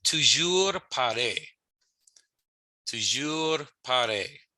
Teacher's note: The R's are rolled, but if you can't roll your R's, that's okay. It's perfectly fine to say toujours pareil.